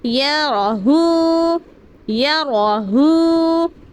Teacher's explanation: یا رو را کو پر یعنی موٹا پڑھنا ہے۔ را پر صبر ہو تو را پر پڑھے جائیں گے یا راہو، یا راہو۔